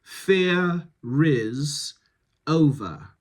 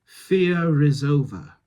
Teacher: So you can link the R